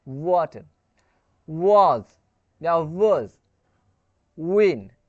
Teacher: व अगर आप प्रोनाउंसिएट करें तो आपके जो लिप है ना वो राउंड कर रहा होगा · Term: विथ लिप्स राउंडेड